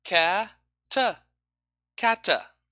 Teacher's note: This phenomenon in linguistics we call epenthesis, adding a vowel at the end of a word, or where it doesn't belong, simply.